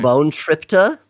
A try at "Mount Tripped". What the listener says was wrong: That's wrong. There's no A at the end of it. There's no A at the end of it. Mount Tripped. Mount Tripped. Yeah, Mount Tripped. Yeah, that's the T sound. That's how you say ta. That's the T sound. That's the T at the end of it. Ta.